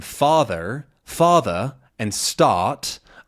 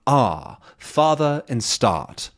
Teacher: So words like red and bread still have a ruh sound, but an r at the end of a sound doesn't exist. It becomes an ah